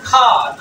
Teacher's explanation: আ sound, long sound পড়বা